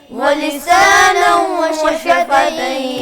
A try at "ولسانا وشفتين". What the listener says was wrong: غنہ پورا کریں، غنہ پورا. ولسانا وشفتين.